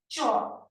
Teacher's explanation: কারণ চটা যখন উচ্চারণ করছি, চ শেষে একটা অ আসছে, চ কিন্তু একা উচ্চারিত হতে পারছে না